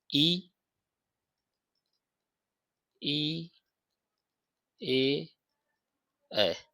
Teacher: जीभ के अगले भाग से इनका उच्चारण होता है। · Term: अग्र स्वर